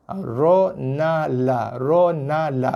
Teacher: Hujung lidah sentuh langit depan, kawasan gusi atas sikit. Yang paling atas sekali huruf ra, turun sikit na, turun sikit la.